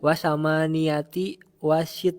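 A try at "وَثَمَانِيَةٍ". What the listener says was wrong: Ditanwin wasama niatin.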